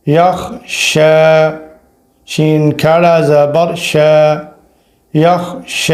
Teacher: شین کے اوپر کھڑا ہے اور کھڑا کو الف جتنا ہی کھینچا جاتا ہے، اور یہ والی یا نہیں پڑھی جائے گی۔